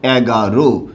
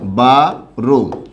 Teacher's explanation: একটু খেয়াল করতে হবে আপনাকে, বাংলায় যে সংখ্যাগুলো আছে এই সংখ্যাগুলোর মধ্যে 11 থেকে 18 পর্যন্ত যে সংখ্যাগুলো আছে এই প্রত্যেকটা সংখ্যার শেষে অ থাকার কারণে অ এর উচ্চারণটা কি হবে? ও হবে।